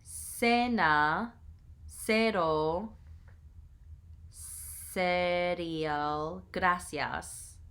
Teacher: In Spanish America, C before E and I is pronounced like the English S in Sam.